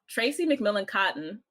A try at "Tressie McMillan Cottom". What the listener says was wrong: You said Cotton again. Stop calling her Cotton. It's Cotton. Cotton.